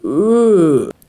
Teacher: Und ihr müsst einfach so tun, als würdet ihr mit dem Mund ein O bilden. O und dann aber versuchen, ein E daraus zu machen.